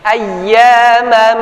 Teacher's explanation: Kita istilahkan dengan fathah tain bertemu dengan huruf mim, maka terjadi satu hukum. Hukum itu adalah hukum idgham bi gunnah. Ya, masuk kepada huruf mim yang selanjutnya. Ayyamam. Pada prosesnya tunggu 2 sampai 3 ketukan.